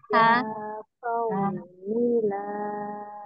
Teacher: huruf H dilatih di tengah tenggorokan